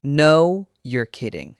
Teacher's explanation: Not a flat no, a stretched out no, you're kidding. It sounds incredibly natural.